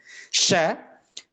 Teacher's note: Sya keluar dari tengah lidah dengan langit-langit. Suara mendesis dan mengalir lembut.